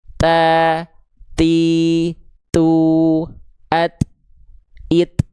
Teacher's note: Ta, ti, tu, kedengeran gak ada bunyi t. Jadi huruf ta itu ada percikan nafasnya.